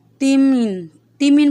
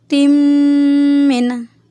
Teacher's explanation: اس کو ہم نے صحیح ادائیگی کرنی ہے اس کی تِمٍ، کیونکہ میم مشدد ہے، میم پہ ہم غنہ کریں گے۔ غنہ کا مطلب ہے ناک میں آواز لے جانا۔